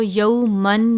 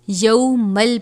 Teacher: لام حرف یرملون میں سے ہے تو یہاں پر غنہ نہیں کریں گے. لام اور را پر غنہ نہیں ہوتا، باقی 4 حروف پر غنہ کرتے ہیں. · تو ہم اس کو یومن نہیں پڑھیں گے بلکہ یومل پڑھیں گے. اس میم تنوین کو ہم اسلام مشدد کے ساتھ ملا دیں گے.